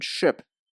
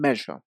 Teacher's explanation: You should not feel any movement in your throat. However, when we make a zh sound, we do use our voice. Put your hand on your throat and make the sound in measure.